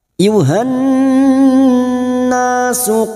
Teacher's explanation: masuk pada huruf nun yang bertasdid mendengung selama 3 atau 2 harakat. Yuhan nasu qad na fathah diikuti alif 2 harakat.